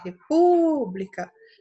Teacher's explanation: Então, por exemplo, eu vou chamar a palavra república, eu vou falar república. Vejam que a sílaba pu é a que se estende. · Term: sílaba mais forte